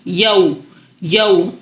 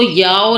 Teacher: واو پورے ہونٹوں کی گلائی میں آ جائیں گے